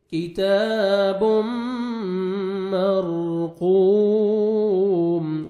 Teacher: قاف کو موٹا کر کے پڑھنا ہے، 1 سیکنڈ کھینچنا ہے، واو مد ہے اور میم ساکن ہو جائے گا جب سٹاپ کریں گے.